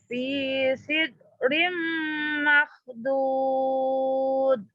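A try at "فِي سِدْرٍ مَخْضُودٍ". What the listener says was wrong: Ya, dikolkolahkan huruf dalnya. Mah, ya tidak kolkolah, bukan mahdud. Jadi untuk dalnya di tengahnya itu kolkolah ya, dia tapi sugro saja, jadi tidak terjeda.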